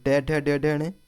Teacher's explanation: हमारी मूर्धन्य ध्वनियाँ हैं